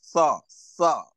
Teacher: touching the tip of the tongue on the Dental, behind the teeth